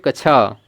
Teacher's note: क और मुर्धन्य स से मिलकर बना होता है और याद रखिएगा यह जो क है साथियों यह हलंत रहेगा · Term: संयुक्त वर्ण